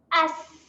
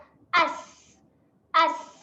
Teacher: Huruf sin ini dia ada satu sifat, iaitu sifat berangin. Okay, jadi sewaktu kita melepaskan atau matikan dekat makhraj huruf sin, kita keluarkan angin sedikit. Hamzah nganga, sin sukun, dia menghasilkan bunyi as.